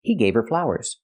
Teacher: you don't hear the H in her because her is not a stressed word